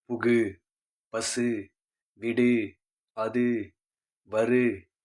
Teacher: தனி குறில் எழுத்தை அடுத்து வரக்கூடிய வல்லின உகரங்கள் ஒரு மாத்திரை அளவுக்கு முழுமையாக ஒலிக்கும்